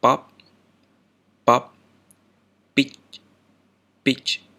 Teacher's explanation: Stop manner. This sounds like pop or peach in English, but more firmly and with no aspiration.